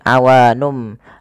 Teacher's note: nunnya bertemu dengan huruf ba awalnya awanun menjadi awanum maka di sini m itu dianggap mati saja sehingga bunyi awanum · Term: bacaan iqlab